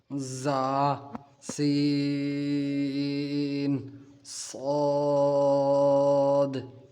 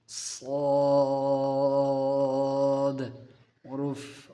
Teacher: سیٹی والے آواز والے حرف زا سین صاد. ان حروف کو پڑھتے وقت آپ کو سیٹی کی آواز نکالنی ہے